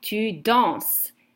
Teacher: And the ending is es, but you do not pronounce the s. So it's the same pronunciation that je danse.